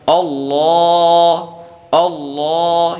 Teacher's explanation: lafzul jalalahnya ini dibaca tebal sampai hamzah wasolnya juga tebal.